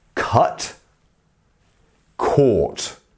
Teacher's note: we have the quick vowel sound, which is the ah, cut. And then we have the longer, more drawn out vowel sound, which is caught.